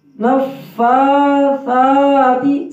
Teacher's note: سا سیٹی کی آواز میں نہ ہو، نرم حروف میں سے ہے سا